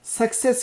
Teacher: iki tane C'nin ilki K sesi, ikincisi S sesi